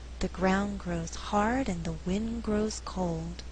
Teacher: In this faster reading, only 4 content words are being stressed: ground, hard, wind, cold. The resulting rhythm is 1 and 2, 3 and 4.